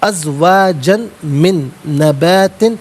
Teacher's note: ازواجن من نبات, ازواجن میں جیم پر 2 زبر کی ترمیم ہے, اسے من کی میم کے ساتھ ملائیں گے. میم کی آواز کو ناظرین غننے کے ساتھ ادا کیا جائے گا